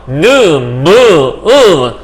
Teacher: 코를 활용해 나는 소리. 이렇게 해서 느 발음하면 코가 하고 울릴 거예요. 느, 무, 하면 전부 다 소리가 울리게 돼 있어요. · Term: 비음